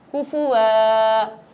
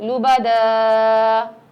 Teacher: دو زبر کو وقف میں ہم ایک زبر سے بدل دیتے ہیں اور ایک الف کے برابر کھینچ کر پڑھتے ہیں